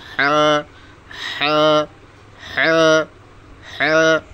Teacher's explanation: হলকের মধ্যখান হইতে হ্যাঁ